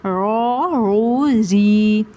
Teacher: رو یا زیر ری، رو کے نیچے زیر ہے تو باریک کریں گے، رو کے اوپر پیش تھا نا تو رو کو ہم نے پر کیا، رو کے نیچے زیر ہے تو رو کو باریک کریں گے